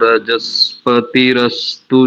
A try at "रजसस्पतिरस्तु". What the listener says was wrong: रजस्पति नहीं करेंगे, रजसस्पति